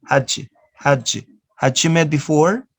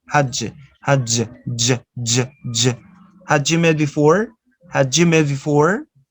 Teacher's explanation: You join the sound da plus ya and becomes j